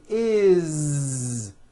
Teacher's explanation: spelled with an S it's never is on voice never ever it's always is with a voiced Z